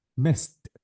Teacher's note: So this is voiceless. Because it is voiceless, delete the E sound and replace the D with what? With T.